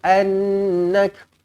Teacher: nun kosong bertemu dengan nun sabdu di sini idgham ma'al gunnah, didengungkan dengan 2 harakat